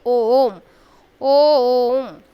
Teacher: उच्चारण में दीर्घ स्वर से भी अधिक समय लगता है, यानी वे प्लुत स्वर बन जाते हैं। जैसे ओम, ओम, यानी ये मिलकर के बन रहा है और टाइम भी बहुत ले रहा है खींचने में, है ना।